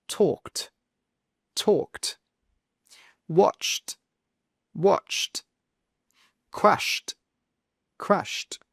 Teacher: you can hear with all of these words that ED is simply pronounced as a T sound